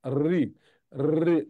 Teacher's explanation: আমরা যখন রি বলি তখন ওই জিহ্বাটা ওই মূর্ধাতে ড্রপিং করে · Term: মূর্ধন্য বর্ণ